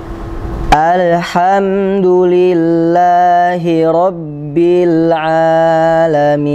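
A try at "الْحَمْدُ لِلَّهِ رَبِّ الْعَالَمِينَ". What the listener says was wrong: Perhatikan, mengucapkan lam sukun, alirkan, bukan dipantulkan.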